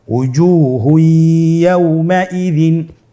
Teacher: তানবিনকে পরবর্তী হরফের সাথে মিলিয়ে গুন্নার সহিত পড়তে হবে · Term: ইদগামে বাগুন্না